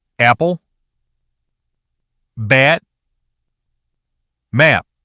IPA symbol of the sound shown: æ